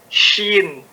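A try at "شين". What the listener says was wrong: panjang. 2, 1, atau 6? 6, ya. Jangan dikurangin ya haknya ya.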